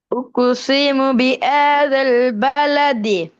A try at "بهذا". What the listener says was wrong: திருப்பி பிஆதல் அல்ல, பிஹாதல் எப்படி? பிஹாதல்.